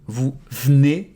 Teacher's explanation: if you want to sound more natural You can devocalize the first E